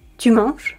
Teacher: Your voice rises at the end of the sentence. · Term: rising voice